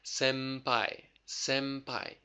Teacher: instead of an N sound use an M sound